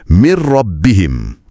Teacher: Bila nun sakinah jumpa lam atau ra, bunyi n dan juga sifat dengung dia hilang 100%. Lebur sepenuhnya. · Bunyi n tu hilang terus. Dan sebutan terus lompat ke huruf R yang bersabdu. Peralihan ni lebih cepat, lebih tajam dan lebih licin dari bigunnah. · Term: idgham bila ghunnah, Idgham bila gunnah